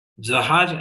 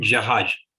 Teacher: first I have pronounced jahaj as soft j, jahaj is hard j.